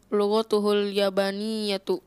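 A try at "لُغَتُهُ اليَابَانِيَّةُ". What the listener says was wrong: Ya-nya panjangkan.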